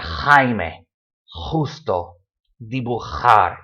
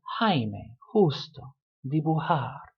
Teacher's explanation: It's a very rough, throaty noise. But for a lot of people, it's a much smoother Jaime, justo, dibujar.